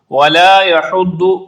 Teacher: اس کا مخرج ہے زبان کی کروٹ جو سائیڈ ہوتی ہے زبان کی، اس کو اٹھائیں گے اور اوپر والی دانتوں کی جڑ میں لگائیں گے تو یہ درست ادا ہوگا۔ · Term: ضاد